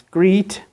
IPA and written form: gri:t (great)